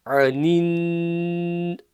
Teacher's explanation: Ayn again, it starts with from the middle of the throat.